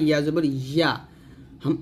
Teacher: ইয়ার জিব্বার মধ্যখান উপতালের সঙ্গে লাগিয়ে বলছি